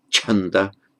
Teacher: C is Chanda, which is the aspirated ch beginning